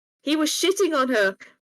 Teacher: A lot of when Swedish people speak English, you'll notice it. The sort of ch sound they struggle with, and it just becomes like a sh.